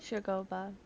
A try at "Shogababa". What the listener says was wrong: You're adding extra syllables. Shogababa.